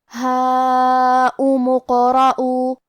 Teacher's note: حرف الراء پہ زبر ہے، تو یہاں را کا حکم ہے تفخیم، ہمیں را کو موٹی آواز میں پڑھنا ہے · یہاں کیونکہ قاف پہ جزم ہے، تو ہمیں قاف کو قلقلہ سے پڑھنا ہے، اور قلقلہ کا معنی ہے حرف ساکن کو ہلانا، تو ہم قاف کو ہلاتے ہوئے یہ کلمہ کو پڑھیں گے. · لیکن یہ حمزۃ وصل ہے، ہم حمزہ کو ظاہر نہیں کریں گے. میم کے بعد حرف القاف پڑھیں گے.